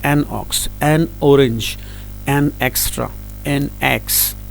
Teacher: اب آکس کا جو الف ہے نا وہ حلق سے شروع ہو رہا ہے